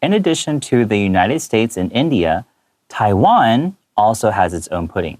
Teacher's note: So I tend to emphasize Taiwan and make it higher in this sentence because, one, it is being highlighted in this sentence.